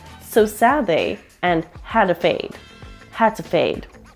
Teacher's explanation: the D in sad and the D in had are dropped